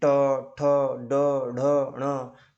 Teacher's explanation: जब ट, ठ, ड, ढ, ण का उच्चारण करते हो तो जीभ का दांत से ऊपर मसूड़ों से टकराहट होता है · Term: मूर्धन्य